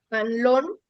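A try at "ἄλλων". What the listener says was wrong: con el acento en la alfa. Allon, Las dos L se pronuncian, las dos L's se pronuncian como L.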